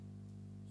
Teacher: চ হচ্ছে অঘোষ স্পর্শ ঘর্ষ ধ্বনি।